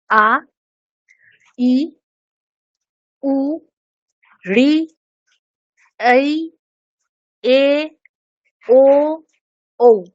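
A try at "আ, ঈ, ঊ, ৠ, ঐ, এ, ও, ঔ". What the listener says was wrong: ঠিক, কিন্তু উচ্চারণটাও দীর্ঘ করতে হবে আমাদের, তাই না? তাহলে যেরকম আমরা আ বলছি, এটার সময়ের থেকে আ যেটা বলবো সেটা একটু বেশি সময় ধরে বলবো। আ, ই,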